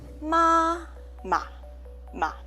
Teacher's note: You pronounce soft and light. And we say this is a neutral tone.